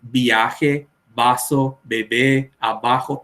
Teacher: un español hablando, ellos van a decir viaje, vaso, bebé, abajo, todo bilabial